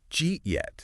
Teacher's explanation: Did you eat yet? becomes jeet yet. Wow, it's like half the consonants just poof, vanish. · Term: sound shaving